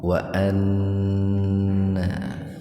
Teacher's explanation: Wa anna gunnah, nun bertasdid dibacanya gunnah. Gunnah itu mendengung, biar terdengar mendengung, tahan dua ketukan.